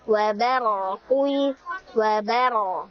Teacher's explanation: Wabaro di situ ada ro sukun yang sebelumnya adalah huruf berfathah sehingga ro-nya kita baca secara tebal atau namanya tafkhim. Pangkal lidah kita naikkan ketika kita membaca ro-nya.